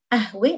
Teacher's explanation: Notice how we change the قاف in Lebanese to the glottal stop.